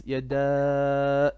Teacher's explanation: on your yada, make it slightly longer, 4 beats.